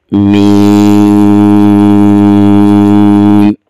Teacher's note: اس کے بعد حرف ہے میم، اس حرف کو بھی 5 الف کی مقدار لمبا کریں گے، دونوں ہونٹ آپس میں مل جائیں گے اور آخر میں پھر میم پر ہونٹ ملیں گے، آواز بند ہو جائے گی۔